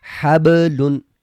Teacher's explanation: با ساکن ہے اور با آپ کو یاد ہوگا کہ حروف قلقلہ میں سے ہے، قاف طا با جیم دال، تو با حروف قلقلہ میں سے ہے، آواز ٹکرا کے واپس آنی چاہیے